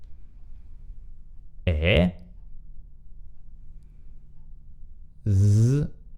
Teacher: un suono sonoro della S che si trova tra due vocali, due E. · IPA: [z]